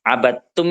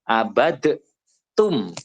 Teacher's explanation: itu bukan kemudian terus di situ langsung ke ta, tapi itu ada dal sukun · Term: dal sukun bertemu dengan ta